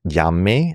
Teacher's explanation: llamé, the emphasis is on the final syllable